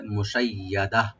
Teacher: ওয়াকফ করার সময় গোলতা এটা হা হয়ে যাবে, মুশাইয়াদা।